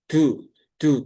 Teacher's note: Jadi ada ikutan hamsnya yang keluar ya, ada aliran udara yang ikut keluar. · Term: logatnya orang Jawa